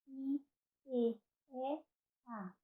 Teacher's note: No caso das vogais frontais, nós temos aqui I, E, A, bem anteriores à posição da língua.